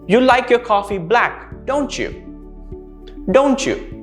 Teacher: would raise your pitch or your intonation towards the end right you would also raise the intonation in the end when you're trying to clarify or confirm something · notice how the intonation rose in the end